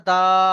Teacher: আলিফ মাদ্দাকে এক আলিফ পরিমাণ টান দিয়ে পড়তে হয়